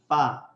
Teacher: اگر میں ہونٹ اپنے اس اوپر والے دانت کے ساتھ نہیں لگاتا تو فا ادا نہیں ہوگا